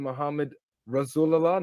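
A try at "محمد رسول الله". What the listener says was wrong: Muhammadur Rasulullah. You didn't say al in front of Muhammad, you say it before Rasul.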